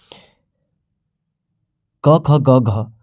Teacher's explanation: क ख ग घ जो चारों वर्ण हैं ये कहाँ से बोले जाते हैं? कंठ से बोले जाते हैं